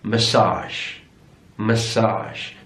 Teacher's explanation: so stressed on the last syllable